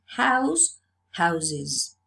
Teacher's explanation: So the fricative s has changed to z. The voiceless s changes to the voiced z, and because z is a sibilant, we have the extra syllable is.